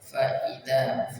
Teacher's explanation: fa hamzah dan huruf dzal. Fa idza panjang dua harakat huruf dzal.